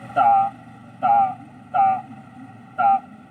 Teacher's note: इसमें हमारे जो दांत होते हैं, जीवा हो वो दांत से चिपकती है · टंग है पहले ऊपर दांत लगती फिर अलग होती है